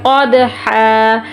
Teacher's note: دال پہ کلکلا کریں گے وقف کی صورت میں